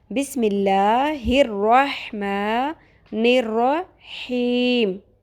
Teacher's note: اب میم کے نیچے زیر ہے تو لام باریک ہوگا